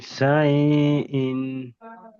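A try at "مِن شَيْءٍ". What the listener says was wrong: শাইটা টান দেবেন না, শাই এটা ইয়া, ইয়ালিন, ইয়ালিন নরম আওয়াজে তাড়াতাড়ি পড়তে হয়। মিন শাইইন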